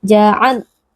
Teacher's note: Wa sempurnakan makhrajnya. Ja'alna huruf lam bersifat bainiyah, ada sedikit aliran suara, tidak boleh diputuskan. Ja'al, tidak boleh ditekan berlebihan.